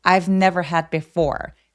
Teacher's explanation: 대신 I've never 이런 식으로 B처럼 들리지 않도록 I've never를 약간 f처럼 바람 소리만 느껴지게 해 주시면 좋아요. 자음 앞에서의 V 소리는 아주 가볍게 F로 발음한다.